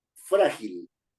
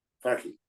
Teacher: evidentemente es una palabra grave, porque el acento está en fra.